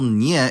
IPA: ɲ